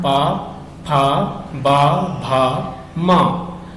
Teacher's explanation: पा फा बा भा मा जो बोलते हैं तो आपके ओठ आपस में मिलते हैं, ओठ आपस में क्रिया करते हैं, तो इसका मतलब है कि ये इनका उच्चारण कहाँ से हो रहा है, ओठ से हो रहा है। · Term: ओष्ठ